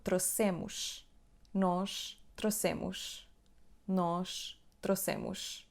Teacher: A última sílaba é mus. A letra O tem o som U. E a letra S tem o som sh no fim.